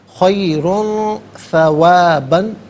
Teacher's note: دو پیش کی تنوین تو پر کر کے پڑھا جائے گا، ثا حرف اخفا ہے تو تنوین کو یہاں اخفا کے ساتھ پڑھا جائے گا. ناک میں آواز لے جا کر گنگنانا، اسے اخفا کہتے ہیں